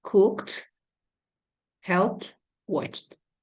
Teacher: We pronounce the ed as t after unvoiced consonants